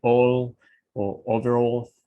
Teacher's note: le llaman L oscura, tiene una forma de producirse pegando la lengua al paladar. Entonces no suena igual que la L del español.